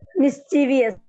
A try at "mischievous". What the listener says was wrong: Yeah, നമ്മൾ എല്ലാവരും അതിനെ മിസ്ചീവിയസ് എന്നാണ് പറയുന്നത്, ബട്ട് ഇറ്റ്സ് ആക്ച്വലി മിസ്ചിവസ്. ആ ബി കഴിഞ്ഞിട്ട് ശരിക്കും ഐ ഇല്ല. മിസ്ചീവിയസ് എന്ന് വായിക്കേണ്ട ആവശ്യം ഇല്ല. ഇറ്റ്സ് മിസ്ചിവസ്. മിസ്ചീ സൗണ്ട് അവിടെ ഇല്ല ആക്ച്വലി. ഇറ്റ്സ് മിസ്ചിവസ്.